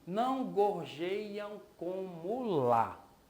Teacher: E o último verso eu tenho não gorjeiam como lá. Então esse lá é a sílaba tônica e por coincidência também ela é a última sílaba mais forte.